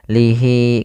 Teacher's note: Kemudian pada lafal hi di sini ada bacaan mad silah qasirah. Yaitu adanya ha dhamir yang dipanjangkan